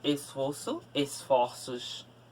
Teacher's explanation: Esforço, aquela voz mais grave. Esforços é aquela voz mais aguda. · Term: Plural com mudança de timbre